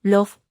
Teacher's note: se pronuncia dejando que el aire fluya por los lados de la lengua